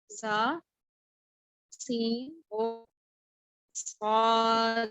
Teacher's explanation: रासुल लिसान जब सनाया उलिया और सनाया सुफला के अंदरूनी किनारों से लगे तो तीन हुरूफ अदा होंगे